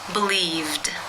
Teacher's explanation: the v consonant sound which is voiced therefore it is again case two where the e d is pronounced as the D sound